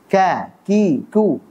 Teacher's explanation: kaf makhrajnya di pangkal lidah di bawah makhrajnya qaf bertemu dengan langit-langit atas, bagian yang lunak dan keras secara bersamaan. Jadi agak ke sana, agak maju dikit.